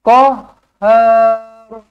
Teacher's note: Ha ada sabdu tau. Jangan kohar. Tekankan dia